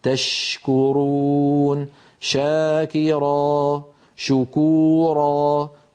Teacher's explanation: الشين تخرج من وسط اللسان مع وسط الحنك الأعلى كما نرى، ولكن يبقى المخرج مفتوحا. تشكرون، شاكرا، شكورا، كل شين مهما كان وضعها فهذا مكان خروجها. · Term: مخرج الشين